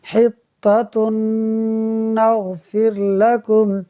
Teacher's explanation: تا پر 2 پیش کی تنوین کے بعد نون حروف یرملون میں سے ہے، لہٰذا ادغام ہوگا، یعنی ہم غنہ کر کے پڑھیں گے